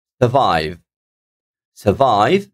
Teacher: I'm putting the stress on the second syllable